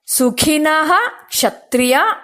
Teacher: ವಿಸರ್ಗ ಆದನಂತರ ಕ್ಷ ಅಕ್ಷರ ಬರೋದರಿಂದ ವಿಸರ್ಗವನ್ನ ಹೇಳಬೇಕು